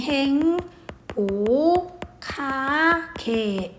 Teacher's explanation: 행복하게는 음운 변동이 행, 보, 카, 게 이렇게 일어나. 그래서 그 기역 플러스 히읗이 만나서 키읔이 되는 거지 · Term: 자음 축약